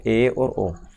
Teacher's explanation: जिन स्वरों के उच्चारण में मुख द्वार जो है वो आधा बंद रहता है ना, आधा बंद रहता है, उन्हें अर्ध संवृत बोलते हैं।